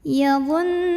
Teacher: Cara membacanya, nun ini dibunyikan dengan dengungan. Jadi bunyi N-nya tahan sampai bergetar halus ke hidung. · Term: gunnah musyaddadah